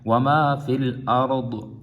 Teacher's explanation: ضاد کی بھی آواز آنی چاہیے اور را کو بھی پر پڑھنا ہے، تو یہ دونوں تفخیم ہے یعنی پر پڑھے جائیں گے۔